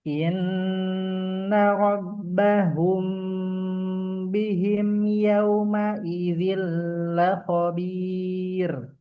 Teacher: mim sukun ketemu ba ikhfa syafawi dengung dua harakat